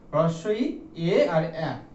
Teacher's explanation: হ্রস্ব-ই, এ আর অ্যা, এই তিনটে হলো আমাদের সম্মুখ স্বরধ্বনি